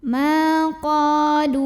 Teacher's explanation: Karena ada alif yang didahului baris fathah, maka cara bacanya dipanjangkan qafnya sepanjang 2 harokat saja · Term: mad tabi'i